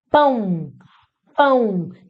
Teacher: Esse O tem som de U. Semivogal.